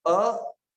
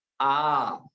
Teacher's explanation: ह्रस्व एक मात्रिक, दीर्घ दो मात्रिक, और प्लुत अर्थात थोड़ा और लंबा तीन मात्रिक उच्चारण। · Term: ह्रस्व दीर्घ